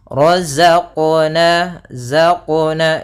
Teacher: Nah, dia ada sifat yang namanya sifat jahar dan dia sifat rokhawah. Ya, za itu rokhawah, artinya suaranya mengalir tapi nafasnya tertahan.